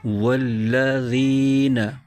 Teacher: ذال کے نیچے زیر ہے اور آگے یا ساکن ہے۔ یا ساکن سے پہلے زیر آ جائے تو یا مدہ ہوتا ہے، اس کو ایک الف کھینچ کے پڑھتے ہیں۔